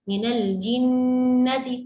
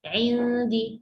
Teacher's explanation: Misalnya kita baca indi sama baca minal jinnati, kesannya minal jinnati lebih panjang dari indi. Sedangkan dua-duanya sebenarnya dua harakat, tapi kan jenisnya kan beda-beda. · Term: gunnah